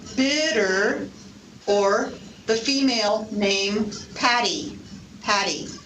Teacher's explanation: or the female name patty patty this is so-called flap t it may sound a little bit like a d or a little bit like an r